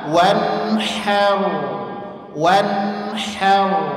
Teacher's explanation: ha tipis senyum, ro-nya tebal ngambekkan tanpa memonyongkan kedua bibir. Ya. Menebalkan huruf dengan memonyongkan kedua bibir itu adalah kekeliruan, kesalahan.